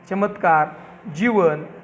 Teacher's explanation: चमत्कार, जीवन या च आणि जचे तालव्य उच्चारणही मराठी माणूस करीत असतो.